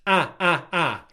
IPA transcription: æ